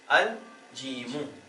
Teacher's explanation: جیم کمریہ میں سے ہے، اسی لام کو ظاہر کر کے پڑھے ہیں